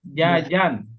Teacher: Jadi jim tidak boleh keluar udara ya.